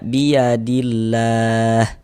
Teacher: Jadi huruf lam jalalahnya itu dibaca tarkik, dibaca tipis. Sehingga ini kita baca biyadillah.